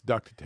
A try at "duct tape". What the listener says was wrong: No, nobody calls it duct tape. Just like it's not a refrigerator, it's a refrigerator. You don't have to enunciate every single word. Or every single letter.